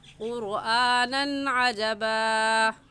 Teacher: قرآنًا پر ہم غنہ نہیں کریں گے، کیونکہ یہاں پر تنوین کے بعد حروف حلقی جو کہ 6 ہے، حمزہ ہا، عین ہا، غین خا، ان میں سے عین آ گیا ہے، اس وجہ سے اس تنوین پر ہم غنہ نہیں کریں گے اور ایسے کہیں گے قرآنًا عجبا۔